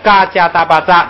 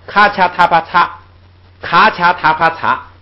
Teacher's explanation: 竖行跟第3竖行是送气的，就是那个 嘎加达巴扎，这是第1行不送气，然后咔嚓塔巴擦，咔嚓塔巴擦，就是第2竖行第3竖行是送气的